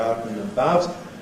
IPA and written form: ˈaʊt n̩ əˈbaʊt (out and about)